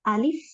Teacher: Alif a itu jangan kepanjangan karena alif ini a-nya tidak panjang, tidak ada tambahan madnya.